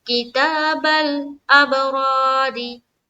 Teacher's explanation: अब रा, रा अलिफ जबर रा, रा के ऊपर क्या है, जबर है, तो रा को पुर रखना है, यानी कि मोटा पढ़ना है।